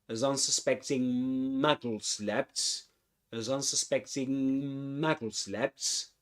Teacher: when you get to unsuspecting, you go straight into m, Muggles